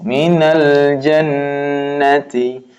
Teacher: membaca nun dan mim bertasdid dengan dengung dua harokat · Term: gunnah